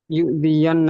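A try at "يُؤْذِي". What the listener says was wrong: Yu'zi, nggak yu'zian, tapi yu'zin Nabi. Yu'zin Nabi, ya.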